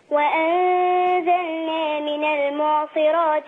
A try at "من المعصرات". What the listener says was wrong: خلي بالك من المعصرات را.